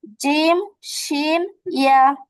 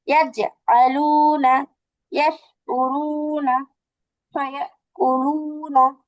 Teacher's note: জিহ্বার মধ্যখান তার বরাবর উপরে তালুর সঙ্গে লাগিয়ে তিনটা হরফ উচ্চারিত হয়।